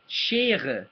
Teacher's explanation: This r sound comes from the back of your throat.